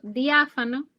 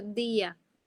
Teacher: cuando yo pronuncio diáfano, hay una unión mayor entre la I y la A que cuando yo pronuncio día